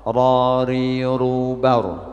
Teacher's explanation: Takrir mengulang-ulang, yakni ujung lidah tergetar ketika mengucapkan huruf ra. Rari rubar.